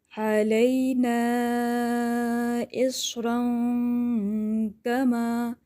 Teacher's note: مد منفصل جائز ادا کریں گے، یعنی 4 سے 5 حرکات کر لیں گے، تھوڑا لمبا کھینچ لیجئے گا۔